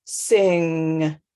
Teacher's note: air is only coming out my nose because my tongue is blocking the air from coming out of my mouth by sealing itself up against the roof of my mouth